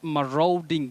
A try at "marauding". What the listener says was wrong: We say row. A and U combine to form the long vowel sound O. Maro, not marau, not marrow. So what confuses many people also in this case is that A and U. So many people think it is phonetic. That is, you follow the spelling the way it is, which is not the case.